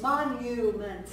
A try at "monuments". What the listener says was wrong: Monument. No, there's no two N's.